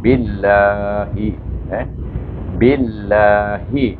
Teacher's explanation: dia baris bawah bertemu dengan Allah, baca dengan nipis. Tetapi dua harakah juga.